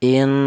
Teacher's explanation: Panjangnya dengung yaitu dua harakat ya atau dua ketukan. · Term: ghunah